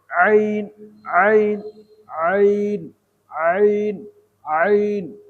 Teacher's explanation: আইন, ভিতর থেকে হলকের মধ্যখান থেকে আইন। এখানে একটু চিপে ধরতে পারেন আস্তে হালকা করে।